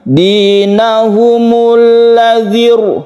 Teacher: Meskipun ada kasroh sebelumnya, tapi karena ada hamzah wasal, maka dia dibaca tebal atau tafkhim.